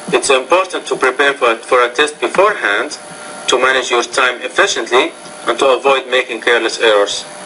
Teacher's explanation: you're slightly inflecting or rising your tone after each item